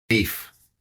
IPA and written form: biːf (BEEF)